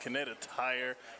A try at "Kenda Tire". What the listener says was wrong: Kenda Tire. Kenda. You said like Kinetic Tire. Like Connecticut. No, yep, Kenda Tire.